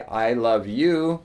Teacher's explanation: you're stressing I not anybody else I love you not other people but I love you I